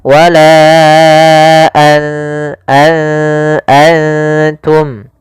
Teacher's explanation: Maka apabila ada nun sukun atau dia huruf yang tanwin, an, in, un, karena tanwin dan nun sukun itu sama bunyinya, kedua-duanya adalah bunyi n, maka ketika bertemu ta, nunnya disamarkan ke huruf ta, an langsung kepada makhraj daripada makhraj huruf ta. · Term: ikhfa